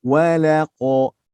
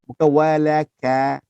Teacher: Seperti qaf tebalkan, ka lembutkan.